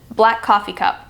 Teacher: And the P sound at the end is completely omitted.